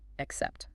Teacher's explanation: Pronounce accept clearly, ensuring the emphasis falls on the second syllable